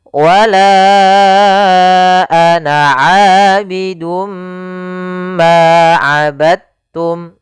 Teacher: Ya, meskipun dal termasuk huruf qalqalah karena dia memiliki makhraj yang sama dengan ta, maka diidghamkan dalnya kepada huruf ta sehingga dibaca dengan huruf ta-nya langsung.